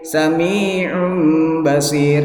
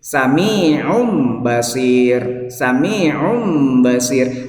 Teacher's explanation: Nah, itu kelihatan di situ bahwa sami'un basir ya, itu iun ini kan ada tanwin, itu berarti di ujungnya ada nun zaidah ya. Nah, nunnya itu yang zaidah itu langsung ditukar ke mim.